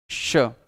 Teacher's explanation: पर एक्चुअल में इसको बोलते समय शुद्ध रूप से आपकी जिह्वा तालू पर जाकर के चिपक जाती है, तभी सीटी जैसी आवाज भी आती है। श श शुद्ध बोलना है तो यही एक तरीका है, श। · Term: तालव्य स